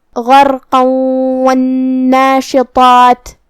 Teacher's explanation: ادغام کا معنی ہے حرف کو حرف میں داخل کرنا، تو ہم یہ تنوین کو واو میں ملا کے غنہ اور تشدید کے ساتھ یہ حکم کو ادا کریں گے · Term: ادغام بغنہ